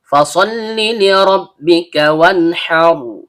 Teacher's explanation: huruf bibir, yaitu perut bibir bawah bertemu dengan ujung gigi seri atas